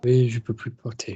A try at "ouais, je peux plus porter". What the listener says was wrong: That's lovely, but I still need some vowel presence. We don't need to just be like aspiration. Ouais, je peux plus porter. Just air across the fold. Give me twang.